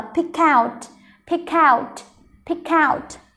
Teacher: cái âm k nó sẽ nối âm với âm out. Mình sẽ đọc là pick out.